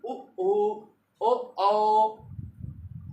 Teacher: वृत्ताकार, अवृत्ताकार। वृत्ताकार जिसमें ओंठ निकलकर आगे की तरफ आ जाएं